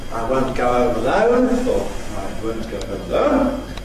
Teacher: [əʊ] rather opener ‘goat’ [gʌʊt].